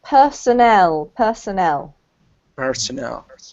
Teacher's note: But in this case, personnel, with the emphasis on the last syllable